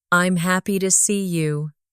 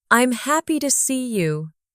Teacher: In the second version, your voice rises on happy. It shows emotion. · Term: intonation